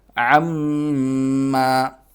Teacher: عین حلق سے اور میم پر غنہ ہوگا